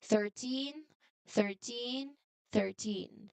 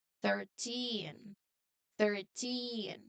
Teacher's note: So we always say the teen part really strongly here. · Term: strong stress